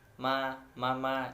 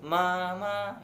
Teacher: Contohnya kata ma berarti ibu jika diucapkan dengan nada sedang, mama, seperti itu.